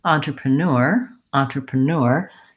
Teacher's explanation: If I say it naturally, entrepreneur, entrepreneur, you can hear that the first three syllables, da da da da, are about the same length as the last syllable. So even though there's a lot of sounds happening in these first three syllables, they need to be fairly quick and light with unstressed vowel sounds. · So even though there's a lot of sounds happening in these first three syllables, they need to be fairly quick and light with unstressed vowel sounds. And neur is stretched out and longer. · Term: long syllable